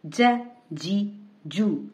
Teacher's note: جو ہی ہم جیم کو ادا کرتے ہیں تو زبان کا درمیانی حصہ اوپر کے تالو سے لگتا ہے تو ہی یہ حرف ادا ہوتا ہے